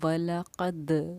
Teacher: द आवाज़ का ये हमारा लौटना दाल साकिन पर, ये हमारा खलखला करना कहलाता है